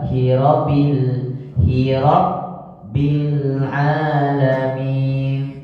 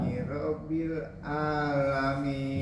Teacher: Tasydid di atas ba. Jadi ditahan sebentar